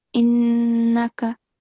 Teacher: Don't make a thick sound for this kaf